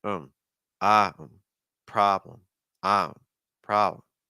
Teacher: You want to use an ah sound, then a quick problem, problem, problem. Do you hear how weak the PR is? And you hear how weak the BL is? So it's not problem, it's a problem.